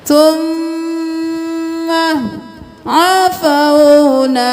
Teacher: میم پہ تشدید ہے، غنہ کریں